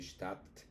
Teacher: como es una D y una T, es como si se duplicara esa T. La D eh, se asimila más hacia la T.